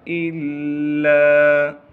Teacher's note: فقال ان هذا الا، حمزہ کو لام سے ملائیں گے کیونکہ لام پر تشدید ہے، حمزہ لام زیر ال، لام کے بعد الف مدہ ہونے کی وجہ سے لام کو ایک الف کے مقدار کھینچیں گے۔